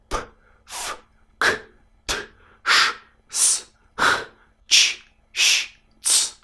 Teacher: the vocal folds rest during their pronunciation. · all these sounds were pronounced with the vocal folds sleeping like a baby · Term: voiceless